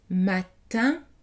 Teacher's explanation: Matin, le N n'est pas prononcé.